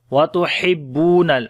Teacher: हा को गले के दरमियान वाले हिस्से से पढ़ेंगे